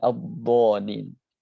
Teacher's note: Jadi bo dia diusahakan dia sangat tebal sekali karena bod itu huruf tafkhim dan juga double, nggak cuma tafkhim saja, dia namanya tafkhim mudbaq. Tafkhim mudbaq itu berarti dia tebal yang sangat tinggi sekali, tebal sekali.